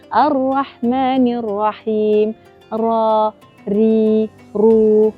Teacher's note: A ra ni kena ada getar, kena ada takrir tetapi tidak secara berlebihan.